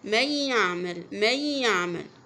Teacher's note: عندك النون دخلها في الياء، هتنطقي الياء بس مش تنطقي النون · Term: ادغام